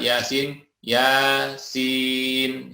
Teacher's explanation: ya dua harokat, sin 6 harokat atau 3 kalinya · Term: mad